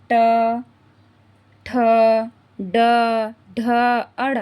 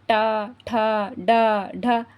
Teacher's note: हमारी जीभ जो है मुर्धा को स्पर्श कर रही है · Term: मूर्धन्य